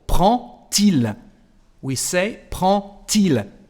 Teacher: the pronunciation of the letter D is like a T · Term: liaison